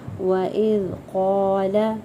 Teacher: اذا کو نرمی سے ادا کریں گے، قاف کو پر پڑھیں گے